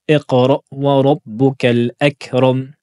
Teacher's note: il faut bien prononcer le hamza sukun, il faut bien fermer les cordes vocales.